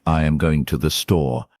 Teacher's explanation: In a statement like I am going to the store, your voice falls naturally at the end.